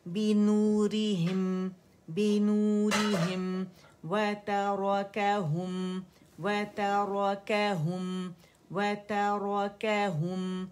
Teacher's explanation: کسرہ کے لیے ایک کاؤنٹ کے لیے آواز لوور جو نیچے ڈراپ ہوتا ہے اور زبان کا درمیانی سر ریز کریں گے